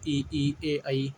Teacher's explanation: अग्र स्वर जो जीभ के आगे वाले हिस्से से बोले जाते हैं उन्हें हम अग्र स्वर बोलते हैं